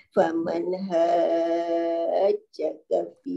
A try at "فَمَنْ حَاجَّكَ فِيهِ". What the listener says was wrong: Okay, masuk sedikit huruf H tu tak masuk sangat. فَمَنْ حَاجَّكَ فِيهِ.